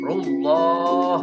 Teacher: ru itu tafhim, tebal. Rullah, dalam mata Allah pun tebal, berat ke o.